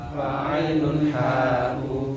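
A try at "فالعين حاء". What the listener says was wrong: Jangan samakan ha yang pertama tadi dengan ha yang ini. Ya, bedakan suaranya. Summa li aqsal hal ki hamzun ha'u summa li waslihi fa'ainun ha'u.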